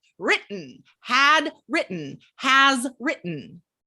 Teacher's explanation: We usually don't say written, right? We use that glottal stop.